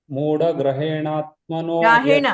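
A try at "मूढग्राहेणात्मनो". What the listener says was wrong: ಗ್ರಹೇಣ ಅಲ್ಲಿ ಗ್ರ ದೀರ್ಘ ಇದೆ ಗ ದೀರ್ಘ ಇದೆ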